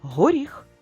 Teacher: в слові горіх останній звук твердий приголосний